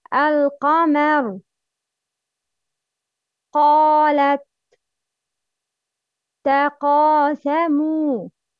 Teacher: Characteristic, heavy, makhraj, the deepest part of the tongue with the soft palate. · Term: qaf